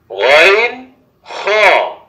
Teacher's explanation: হলকের শেষ ভাগ হইতে গইন খ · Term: মাখরাজ